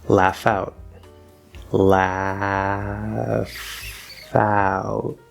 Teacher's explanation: So don't be fooled by spelling. This is an F sound, and we go from the F over to the diphthong ow. So we will connect laugh out.